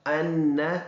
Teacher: سین سیٹی والا ورڈ ہے اور با دونوں ہونٹوں کو سختی سے ملانے سے ادا ہوگا۔ ان، یہ نون مشدد ہے، اس میں ایک الف کی بقدر غنہ ہوگا